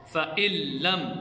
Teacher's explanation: فَإِلَّمْ میں نون ساکن ہے لیکن ہم نے حمزہ کو لام کے ساتھ ملایا اور یہ بغیر غننے والا ادغام ہے